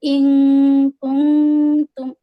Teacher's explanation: حمزہ کسرہ نون سکون، یہاں پہ اخفا ہوگا نون سکون. اور کاف دمہ، نون سکون کو کاف میں ہے نا اخفا کر کے، کاف ہے نا اخفا لیٹر میں سے ایک لیٹر ہے.